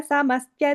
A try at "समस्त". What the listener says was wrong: And the second line, you are seeing adding a ya, I heard. Samastya, you are saying it's just samasta.